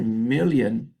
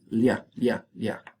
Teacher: Y fíjense, million in English, that's the sound. It's like a la and a ya, pero pronunciadas a la vez y sale lia, ¿no? Lateral palatal.